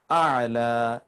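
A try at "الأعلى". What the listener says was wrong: আলাটা উচ্চারণ করতে হবে সুকুন নিয়ে।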